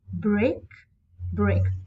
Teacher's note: both syllables are stressed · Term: sponding